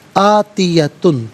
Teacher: ان الساعۃ آتیۃ، آتیت میں تا پر 2 پیش کی تنوین ہے، اس کے بعد حرف علقی حمزہ ہے تو تنوین کو یہاں پر اظہار کے ساتھ پڑھیں گے، غنہ نہیں کیا جائے گا